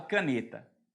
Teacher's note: A palavra caneta, a sílaba tônica é o ne